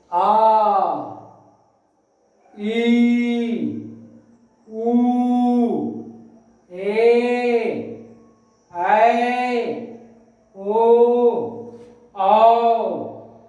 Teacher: दीर्घ स्वर में ह्रस्व स्वर की अपेक्षा ज्यादा समय लग रहा है